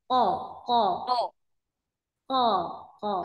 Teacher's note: posisikan huruf qnya di titik makhrajnya pangkal lidah belakang ketemu langit-langit yang lunak ya